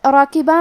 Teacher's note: را کا حکم ہے تفخیم، ہم حرف الرا کو موٹی آواز میں پڑھیں گے